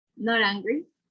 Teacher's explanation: the T sound in not will become more like a R sound, not angry.